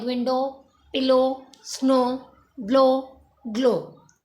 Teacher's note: W जो है वो इतना क्लियरली किसी भी वर्ड में हमें शो नहीं होता, O पे एंड हो जाता है वर्ड। ओ का साउंड ज़्यादा प्रोमिनेंट है। मोस्टली वर्ड्स में जो है हो सकता है कि OY का साउंड आ रहा हो, लेकिन O ज़्यादा प्रोमिनेंट होता है।